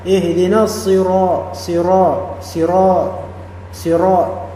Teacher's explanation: Kemudian ro mufakhamah dibesarkan.